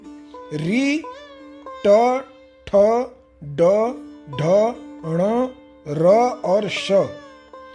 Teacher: तीसरा है मूर्धा। इससे ऋ ट, ठ, ड, ढ, ण, र और श। इन वर्णों का उच्चारण होता है। और इसके लिए सूत्र है रिटु रसणम मूर्धा।